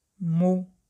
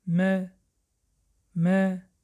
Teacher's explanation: فراموش نکنید در وقت تلفظ آواز او لبها به پیش برآورده می شوند. مو. اگر لبها به پیش نبراریم آواز چنین می براید.